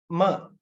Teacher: two lips two lips are involved you bring it together · instead of letting the air pass through the mouth passage no oral cavity so you let it pass through nose the nasal cavity